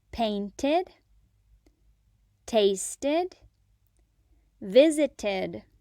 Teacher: In these words, ed makes the id sound, not the d sound, not the t sound, but the id sound. Painted, tasted, visited. · the ed adds an extra syllable, id.